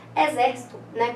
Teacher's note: A sílaba tônica, né? Acentuada. É a antepenúltima, né? To seria a última, si seria a penúltima e zer é a antepenúltima. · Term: proparoxítona